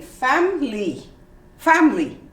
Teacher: you omit the i and you say family family